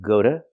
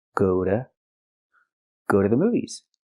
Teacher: the T is pronounced like a fast D